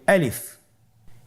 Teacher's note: বলছি এর মধ্যে কোন টান হবে না আলিফ আবার বলুন আলিফ আলিফ হরফটি মাখরাজ হলো আপনার মুখের শূন্যস্থান থেকে গলা এবং মুখের শূন্যস্থান হতে আলিফ হরফটি উচ্চারিত হয়